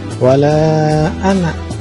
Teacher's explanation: Ini sama mad jaiz munfasil. Ini juga perlu diketahui bahwa ini namanya alif zaidah. Ini dibacanya pendek.